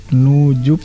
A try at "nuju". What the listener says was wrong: Nuju, bukan nujuk. Nuju.